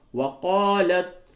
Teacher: لام کو تا سے ملائیں گے، یہ جو تا ہے اس تا کا تا میں ادغام کر دیا گیا، تو لام کو آپ تا سے ملائیے۔